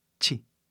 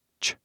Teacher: Vê aqui no português, o chi tem um som de i no final, mas no inglês não. Tem som de ch, quase som de a no final, entendeu?